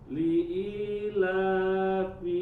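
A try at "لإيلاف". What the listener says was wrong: Kepanjangan sedikit.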